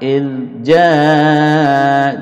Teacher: إذ tanpa mantul ya tanpa qalqalah